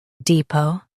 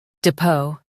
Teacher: In US, stress D. In UK, stress dep.